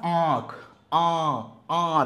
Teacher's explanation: देखो नाक पे आवाज जा रही है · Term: अनुनासिक